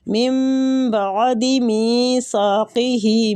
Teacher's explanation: با کا رول ہے نون ساکنہ کے بعد، من بعد میثاقہ، می کے آگے یا مد ہو رہی ہے، سا کے آگے الف مد، دونوں کو قائم مقام کھینچا جائے گا